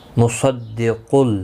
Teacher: صاد اور قاف دونوں مستعلیہ ہیں، پر پڑے جائیں گے